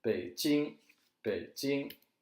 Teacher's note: if you notice the third tone in Beijing when you say it in a word is low